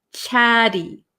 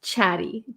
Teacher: So we have these two vowels here, two vowel sounds. So in American English, we're going to take these T's and we're going to make them a flap T. Chatty. So it's going to sound like a kind of soft D sound.